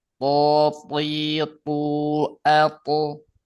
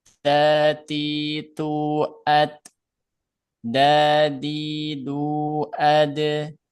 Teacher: Kalau po tebal, da dan ta tipis.